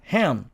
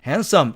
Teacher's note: 그래서 실제로는 hand 이렇게 발음합니다. 그래서 n 뒤쪽에 자음 d가 탈락했다는 얘기죠.